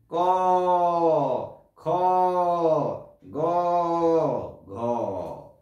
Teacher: ক মনে হচ্ছে এখন কণ্ঠ থেকে, গলার ভেতর থেকে চলে আসছে। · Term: কণ্ঠ ব্যঞ্জন